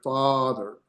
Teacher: even if you say it fast, father, you're still spending more time in that vowel sound than you would be, say, in this next type of E, a set A, and it has more of an A sound, and it's like in they. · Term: comates